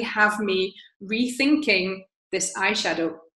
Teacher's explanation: going very very fast and so we does something similar here have me as well in the middle is very reduced